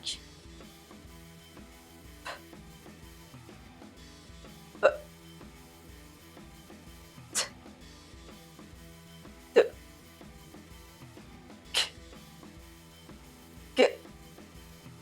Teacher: Now, let's practice with your mouth and tongue. Notice how the sounds take your tongue from the front of your mouth to the back.